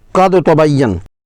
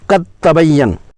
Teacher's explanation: دال کی آواز بالکل نہ آئے اور اس براہ راست تا پڑی جائے، قد تبین۔ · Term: ادغام